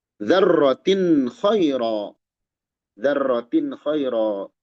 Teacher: Tin tanwin menghadapi kha, izhar halqi. Dibaca jelas.